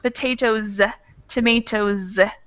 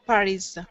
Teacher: we have words that end in voice consonants or vowels so potatoes would have a z sound